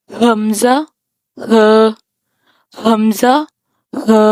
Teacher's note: حمزہ اور ہا دونوں انتہائی حلق سے ادا ہوں گے۔